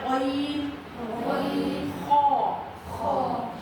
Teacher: یہ 2 لفظ جو ہیں یہ حلق کے اوپر والے حصے سے اس کی آواز نکلتی ہے